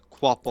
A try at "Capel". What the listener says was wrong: That's not how you say it. There's no W.